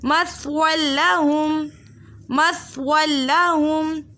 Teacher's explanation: دو زبر کی تنوین کے بعد لام متحرک آ رہا ہے تو ہم نے بغیر غنّے کے پڑھنا ہے، قاعدے کا نام ہوگا ادغام بلا غنّہ، ادغام بلا غنّہ۔